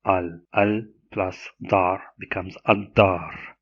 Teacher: The L assimilates totally with the following D. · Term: total assimilation